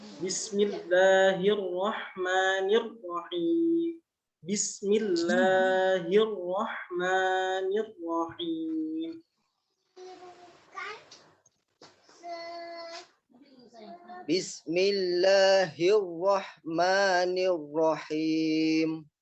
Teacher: nunnya itu tipis, tapi rohnya karena dia berharokat fathah itu tebal.